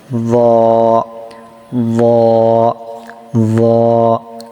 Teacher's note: জয়ের মাখরাজটা কি আমরা আগেই পড়ে আসছি, যে এই যে সায়ের মাখরাজ, সা জাল একই মাখরাজ, জিহ্বার আগা সামনের উপরে 2 দাঁতের আগার সঙ্গে লাগিয়ে জ জাল সা উচ্চারিত হয়